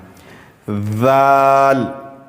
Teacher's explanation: زبان کی نوک کو اوپر والے دانت سے ٹچ کر کے پڑھنا ہے